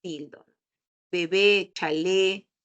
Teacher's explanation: mayor fuerza de voz en la última eh sílaba